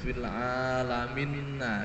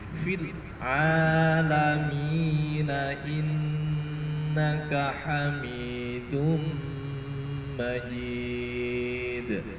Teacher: coba fil alamina bukan fil alaminna okay? Jadi nunnya tidak ada tasydid tapi mi-nya harus dipanjangkan fil alamina bukan fil alaminna ini keliru okay?